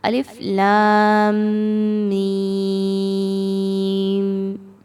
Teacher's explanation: لام کو دیکھیں تو اس پر آپ کو مد نظر آ رہی ہوگی، جس کو ہم نے 4 سے 5 حرکات کے برابر کھینچ کے لمبا کر کے پڑھنا ہے۔ میم پر تشدید آ رہی ہے، تشدید کا معنی کیا ہے کہ میم یہاں پر ایک بار نہیں بلکہ 2 بار موجود ہے۔ · میم پر تشدید آ رہی ہے، تشدید کا معنی کیا ہے کہ میم یہاں پر ایک بار نہیں بلکہ 2 بار موجود ہے۔ لام اور میم کو آپس میں مضبوطی کے ساتھ ملاتے ہوئے میم پر غنہ ہوگا اور میم کو بھی 5 حرکات کے برابر لمبا کر کے ادا کیا جائے گا